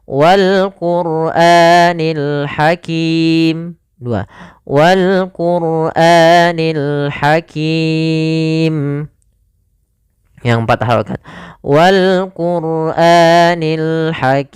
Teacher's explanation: pada lafal kim, ini kita boleh memanjangkan 2 harakat, boleh 4, boleh pula 6 harakat. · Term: mad arid lisukun